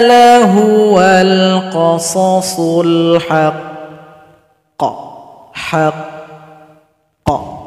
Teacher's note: Cara berhenti pada qaf yang bertasdid ini sering muncul dan sering kita bahas. Sukunkan huruf qaf, tahan 2 detik baru dipantulkan.